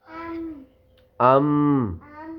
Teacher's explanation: دونوں ہونٹوں کے بیرونی ہاں حصے جب آپس میں ملے تو میم ادا ہوتا ہے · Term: حروف شفوی